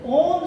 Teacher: ओम का जब आप उच्चारण करते हैं तो ओम शब्द जो है वो प्लुत ध्वनि का उदाहरण है